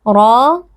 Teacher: Ra, huruf tafkhim atau huruf tebal, pastikan kita menebalkannya dengan cara mengangkat pangkal lidah kita